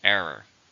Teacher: How many syllables are in error? 2. Stress on the first.